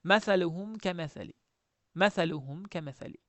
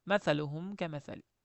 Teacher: G'unna ham yo'q, nima ham yo'q oddiy, ochiq, aniq talaffuz qilgan maaluhum kamali.